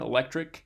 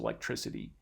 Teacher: But when we add this affix to it, that k sound turns into an S or a soft C sound, so electricity.